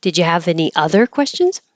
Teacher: maybe you had already been answering questions but you want to see if there's any more then you would emphasize other